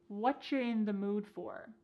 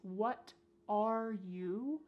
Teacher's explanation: Here the word you has been reduced to cha.